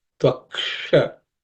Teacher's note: This uksha involves the sh, which is cerebral sh. So your tip of the tongue should point towards the roof of the mouth.